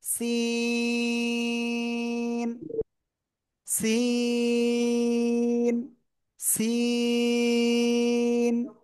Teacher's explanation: এরপরে শিখেছিলাম এই অক্ষরটা ওই একই জায়গা থেকে চার আলিফ টানে উচ্চারণ করব, এরকম চিকুন আওয়াজ হবে